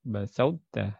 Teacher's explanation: Jadi masih ada sisa-sisa huruf to ya ketika idgham